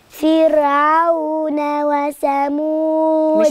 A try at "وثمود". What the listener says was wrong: مش بالسين، بالثاء. وثمود.